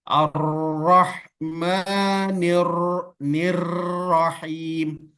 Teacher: Ini tadi sudah kita bahas pada sifat inhiraf, tapi getaran pada huruf ro tidak boleh terlalu banyak, cukup satu kali. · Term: takrir